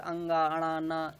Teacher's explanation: ये पंचमाक्षर जो होते हैं, पांचवें अक्षर अंगा, अणा, ना, ये सब किससे बोले जाते हैं, नासिका से बोले जाते हैं